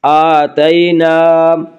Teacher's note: آتینا، الف مدہ، الف ہمیشہ مدہ ہوتا ہے، الف سے پہلے ہمیشہ زبر ہوتا ہے۔ الف مدہ کو ایک الف کے برابر کھینچ کر پڑھیں گے